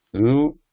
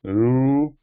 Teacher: So both are similar, ru and ru. Only that timing is different. The duration. Ru is shorter.